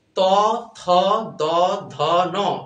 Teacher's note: ত, থ, দ, ধ, ন, দাঁতের সাথে লাগতেছে জিহ্বা, এই জন্য এটা দন্ত বর্ণ।